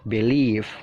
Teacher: Jadi penekanannya itu mengarah ke leave-nya ditekan ya. Jadi B-nya itu singkat aja.